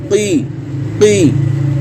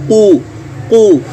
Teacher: आपकी ज़ुबान की जड़ है वो ऊपर की तरफ उभरेगी और नरम तालु के साथ मिल जाएगी। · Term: क़ाफ